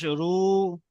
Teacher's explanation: র, ওয়াও পেশ রু, ওয়াও সাকিনের ডান দিকে পেশ এসছে, ওয়াও মাদ্দা, ওয়াও মাদ্দাকে একালি পরিমাণ টান দিয়ে পড়তে হবে